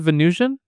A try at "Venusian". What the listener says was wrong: Is Venusian. Venus. Not Venice.